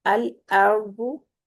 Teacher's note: औरदू कर देते हैं, औरदू नहीं करना। अल अर्दु, आ को आ होंठों को चीरते हुए अदा करना है और रा को पुर करना है